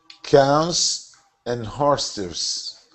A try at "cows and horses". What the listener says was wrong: That's it. Nice job.